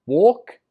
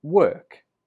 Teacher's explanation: The difference is in the vowel, or and er.